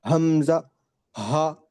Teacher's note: پروناؤنس from the bottom part of the throat, حمزہ پورا نیچے سے